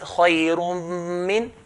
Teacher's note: Here, khayrum min, we're going to pronounce it khayrum min. So one of the dhamma will be taken off and the ghunna will be with the letter of idgham